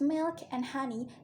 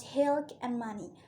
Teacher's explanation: the glottal fricative and the bilabial nasal have switched positions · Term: metathesis